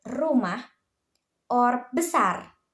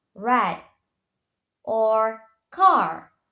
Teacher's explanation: In Indonesia, when produced a rolled sound, meaning the tongue rapidly vibrates against the roof of the mouth. This is common in words like rumah or besar.